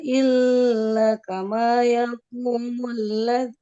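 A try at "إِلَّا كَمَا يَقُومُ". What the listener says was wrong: Ya. Di lamnya dipanjangkan. Perhatikan di illa. Di lamnya ada tanda panjang tidak? Ada. Lam setelahnya ada alif. Illa. La. Lam alif. Itu dibaca panjang.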